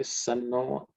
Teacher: Shan. This Naha becomes no because of Sandhi. Okay, Sanno.